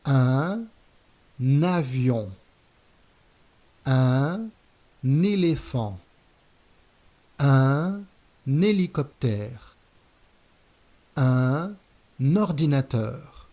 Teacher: Watch out, when we have the masculine article un followed by a vowel or an H, we're going to do a liaison, which is we're going to link the article with its noun by adding an N sound at the beginning of the noun. For example, un avion, un éléphant, un hélicoptère, un ordinateur.